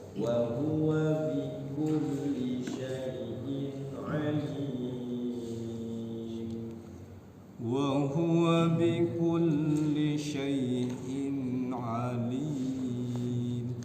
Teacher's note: Kulnya jangan ditahan, bikulli langsung.